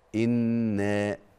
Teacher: حرف مد وقبله مفتوح أو فتح وليس بعده سبب من أسباب المد اللي هي الهمزة أو السكون، فبنمده مد طبيعي حركتين فقط لا أقل ولا أكثر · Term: المد الطبيعي